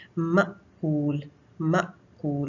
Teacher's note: हम जब हमजा को साकिन पढ़ते हैं तो एक हल्का सा झटका आता है